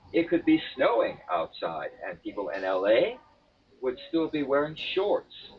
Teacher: the last word in the sentence shorts is an important word it's an important word so you can't go down on it you you have to make it an operative word so in